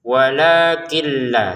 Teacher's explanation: Untuk kin di sini bertemu lam, maka masukin nunnya ke lam tanpa dengungan